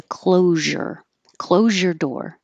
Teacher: If the sound is a Z and a Y, then it makes the voiced zh version. So closure turns into closure.